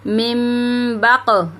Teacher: اب دیکھیں، اب وجہ آ گئی کہ با آ گیا، اب ہمیں اقلاب میں بدلنا ہے۔ اب ہم اس کو من نہیں پڑھیں گے بلکہ پڑھیں گے مم، ٹھیک ہے، گنہ کریں گے